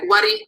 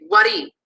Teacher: So if you take a high tone word like wari, which means money, and you stick a low tone onto it, you get wari with the following tone